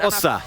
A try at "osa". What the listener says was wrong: It's somewhere in between. Yeah, it is like, it's more Osa, but with a slightly shorter O.